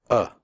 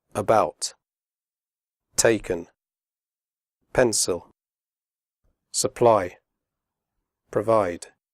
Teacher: the sound is made with your mouth slightly open and relaxed and without moving your tongue it comes from the throat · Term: schwa